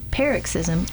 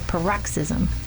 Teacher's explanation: stress the first syllable of the word. And then the second way you pronounce it, you stress the second syllable